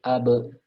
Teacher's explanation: ada ba sukun qalqalah ya cuman qalqalahnya dibaca tarqiq ya